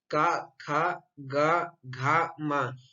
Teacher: इन 5 वर्णों को हम उच्चारण करते समय हमारी ध्वनि जो है कंठ से निकलती है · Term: कवर्ग